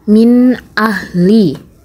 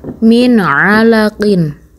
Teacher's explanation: Jadi, apabila kalian membaca Al-Quran dan menemukan ada nun sukun dan tanwin yang bertemu dari salah satu huruf idhar yang 6 ini, maka nun sukun atau tanwin tadi dibaca jelas, tidak dengung, tidak samar. Contohnya, min ahli, nun sukun bertemu dengan huruf hamzah.